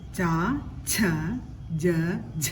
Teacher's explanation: ജ എന്ന അക്ഷരത്തിന്റെ കൂടെ ഹ ചേർത്ത് ഉച്ചരിക്കുന്നതാണ് ഝ